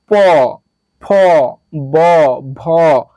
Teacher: দুই ঠোঁট একসাথে স্পর্শ করা ছাড়া এগুলো একটা উচ্চারণ করা যাবে না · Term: প বর্গীয়